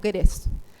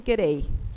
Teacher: tienen un voceo ellos, el monoptongado, el típico argentino, pero también tienen unas versiones diptongadas. Por ejemplo, dicen queréis.